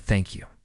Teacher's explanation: When you want your English to sound warm and sincere, focus on your tone. your voice should go down slightly. At the end of the sentence, almost like a gentle landing. It's not rushed, not mechanical, just calm.